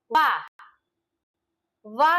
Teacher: दंतोष्ठ, दांत प्लस निचला ओंठ, वा का उच्चारण स्थान क्या है? दंतोष्ठ।